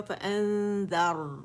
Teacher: نون ساکن کے بعد زال آ رہا ہے تو یہاں پہ باریک اخفا آ رہا ہے